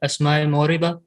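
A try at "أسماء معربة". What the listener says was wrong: اسماء موربہ نہیں ہوتا، اسماء معربہ، را کے اوپر زبر پڑتے ہیں.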